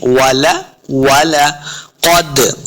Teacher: क़ाफ हुरूफ मुस्तालिया से, इसको मोटा करेंगे। दाल साकिन है, दाल हुरूफ क़लक़ला से है, इसको खूब वाज़े करेंगे।